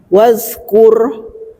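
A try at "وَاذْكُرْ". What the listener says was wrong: Wazkur. Nah, itu masih mencucu roknya. Wazkuru. Balik lagi Bu ke makronya, roknya.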